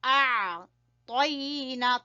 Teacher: حمزہ کو عین سے ملائیں گے، عین کو گلے سے نکالنا ہے